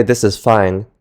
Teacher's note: When we usually speak a normal sentence in a standard American accent, we use a relatively flat pitch with a subtle drop off in pitch at the end · we use a relatively flat pitch with a subtle drop-off in pitch at the end. Did you notice how when I said at the end, my pitch lowered? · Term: drop at the end